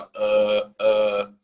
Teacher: The American accent opens up the throat more and has the tongue low. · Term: neutral sound